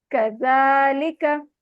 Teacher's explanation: का को लंबा नहीं करना